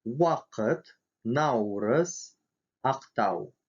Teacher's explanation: В, как в английской W, когда буква У стоит перед или после гласной, в начале, середине или в конце слова.